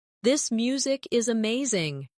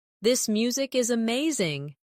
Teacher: Stress amazing to show enthusiasm.